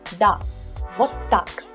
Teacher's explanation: So you confirm with putting emphasis on так, you confirm what you said before.